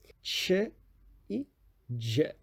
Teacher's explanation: Ela tem uma oclusão com a plosiva e depois uma onda irregular. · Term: africadas